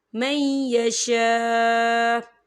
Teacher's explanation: یہاں دیکھیں آپ کو چھوٹی سی توئیں بھی لکھی ہوئی نظر آ رہی ہے، تو یہ وقف مطلق کی علامت ہے، تو یہاں پر ٹھہرنا بہتر ہے۔ وقف کی صورت میں حمزہ ساکن ہو جائے گا